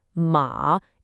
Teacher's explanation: said with a dipping, third tone, ma, it means horse.